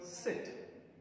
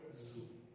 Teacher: I am trying to form a narrow gap between my tongue and the teeth ridge and trying to release the air out. · First is voiceless, second is voiced. Examples are initial sound in the word sit and initial sound in the word zoo.